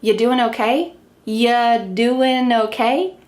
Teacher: We can reduce this even further by cutting off our first verb, are.